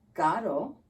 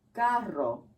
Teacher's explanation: R by itself sounds softer than a double R